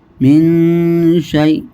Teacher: میم نون زیر من، نون ساکن کے بعد اخفاء حقیقی کے 15 حروفوں میں سے شین ہے، اس لیے یہاں اخفاء یعنی غنہ کر کے پڑھیں گے، اخفاء کا غنہ ہوگا یہاں.